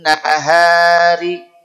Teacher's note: pertama terjadi pada Nun tasdid dan mim tasdid tahan tidak tergesa-gesa tahan dulu kadarnya tiga ketuk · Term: ghunah